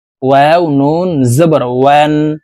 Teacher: ওয়াও নুন জবর ওয়ান, এখানে ওয়ান গুন্না সারা পড়তে হবে, কারণ নুন সাকিনের পরে ইজহারের হরফ হা আসছে, এই কারণে এই নুন সাকিনকে গুন্না সারা স্পষ্ট করিয়া পড়ব